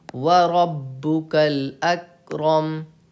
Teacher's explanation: با پہ تشدید ہے، یہاں پہ آپ کو 2 حرف کی تاخیر کے برابر سختی کرنی ہے